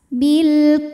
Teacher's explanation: karena alif lam menghadapi huruf qamariah yaitu Kaf maka lam sukun dibaca jelas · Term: alif lam qamariah